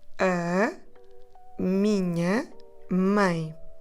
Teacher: This might sound very nasal, and it is. On minha, we have a consonant nasal sound, nha, and on mãe, we have a nasal diphthong, ein.